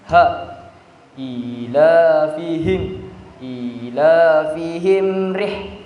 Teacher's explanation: h tebal jadi cara membaca itu h tebal itu H itueng berada di tenggorokan bagian bawah jadi ketika kita membacanya pasti dada kita pasti bergetar